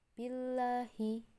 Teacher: untuk bacaan yang tarqiq ini tipis, hanya diawali dengan kasroh sebelum lafaz Allah